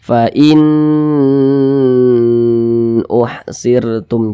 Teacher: Karena dia izhar maka dibaca jelas, tidak berdengung. Jadi dibaca pendek saja. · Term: izhar halqi